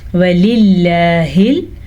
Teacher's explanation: لفظ اللہ کو ہم نے باریک پڑھنا ہے کیونکہ لفظ اللہ سے پہلے زیر ہے۔ وَلِلَّهِ، ہا کے مخرج کا دھیان رکھنا ہے، یہ حروف حلقی میں شامل ہے، لیکن یہ ہا کا وہ مخرج ہے جو حلق کے آخری حصے یعنی کہ سینے سے نکلتا ہے۔